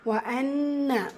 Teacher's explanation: وَأَنَّ நூன் முஷத்தா, குன்னா நூன் முஷத்தா, ரெண்டு இடத்துலையுமே நூன் முஷத்தா. ஸோ ரெண்டு இடத்துலையுமே நீங்கள் குன்னா செய்யணும். கூடவே அலிஃப் மதா இருக்கிறனால 2 ஹரக்கத் அளவு நீட்டம் கொடுத்து ஓதணும்.